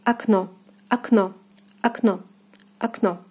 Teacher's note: And here it falls on the second syllable. So the first O will be reading as A, and the second as in the alphabet O.